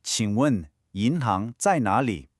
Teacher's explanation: Notice the low dip on the third tone of qing, then the clear rising second tones on yin and hang, and it ends with another one of those low dipping third tones on nar.